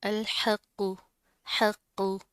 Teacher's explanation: क़ाफ मोटा पड़ा जाएगा, जमा कर पढ़ेंगे।